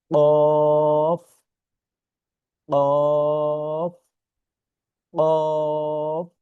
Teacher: আচ্ছা, তারপরে যে হরফ এখানে দেখা যাচ্ছে অফ, অফ, অফ। এই হরফটি উচ্চারণ করার ক্ষেত্রে একটু গলায় বাড়ি দেয়, যেরকম প, প, প, এই, এই, ও, ঠিক আছে, একটু আমাদের গলায় একটু বাড়ি দিবে।